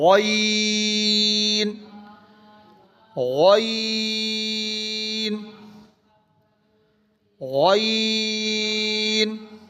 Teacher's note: اس کے بعد ہے غین، موٹا کر کے لمبا کرنا ہے